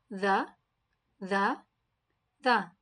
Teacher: The makhraj of Zal is touch the tip of the tongue to the edge of the upper teeth and blow with a strong sound. It is similar to Tha.